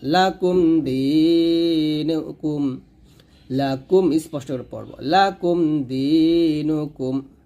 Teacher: হুম ফিহা, লাম জবর লা কাফ মিম পেশ কুম লাকুম, এই নুন সাকিনের পর দাল, সরি মিম সাকিনের পর দাল আসছে, গুণ হবে না।